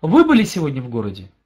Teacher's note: разный вопрос разная интонации но везде повышение на вопросительным слове